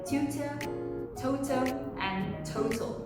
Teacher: the british tea is very soft it's very crisp